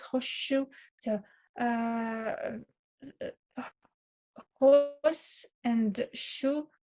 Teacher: Here it is just assimilates with sh, and it just sounds as one sound, sh, without s separately. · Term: complete